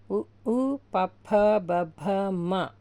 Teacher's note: ఓష్ట్యములు అంటే పెదముల నుండి పుట్టినవి